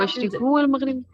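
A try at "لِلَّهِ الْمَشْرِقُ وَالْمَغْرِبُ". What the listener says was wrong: ہاں مشرقو ایک پیش آئے گی. लिल्लाहिल मशरिकु वल मगरिबु। ये जो ली है ना, ली की वजह से यहाँ पे जेर आ रही है, तो यहाँ पे जेर नहीं आएगी, बाद वाले पे उस पे पेशी आएगी।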